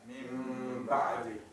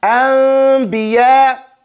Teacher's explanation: Don't close your lips. Don't put your lips, you close it so close that it's a little sliver, but it's not touching all of it until the last second when you make the ba sound. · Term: iqlab